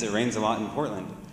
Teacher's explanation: if you look at the t, it stops before you say it, and then it bursts of air.